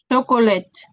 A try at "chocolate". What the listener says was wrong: You're still saying shh. No, it's not shh. It's ch.